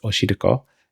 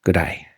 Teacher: My tongue is not as far back in my mouth as it would be for an English R sound, but it's also not as far forward as it would be for an L sound, because my tongue does not touch my teeth like it does with an English L sound.